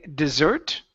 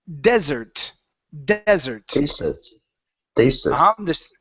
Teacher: The stress is at the very beginning.